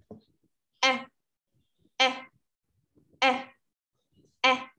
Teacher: E is a short and relaxed sound. Ok, rất là thoải mái này, ngắn này và thoải mái này. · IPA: /e/